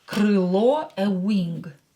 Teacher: O is stressed, so pronounce it as O. Don't change it.